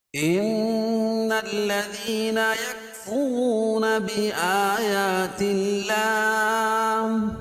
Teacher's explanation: ان نون مشدد ہے، اس میں غنہ ہوگا۔